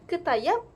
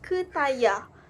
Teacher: murid sukar untuk menggabungkan bunyi fonem vokal dan konsonan yang terakhir bagi perkataan, lalu membuatkan keputusan untuk menggugurkan fonem konsonan yang terakhir. Kita dapat lihat misalnya perkataan ketayap dibaca sebagai ketayah.